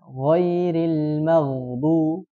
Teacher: Gho ini sifatnya rakhawah karena sandaran kepada makhrajnya lemah. Tidak seperti huruf ko.